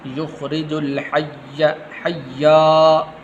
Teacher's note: اس جا کو لمبا نہیں کرنا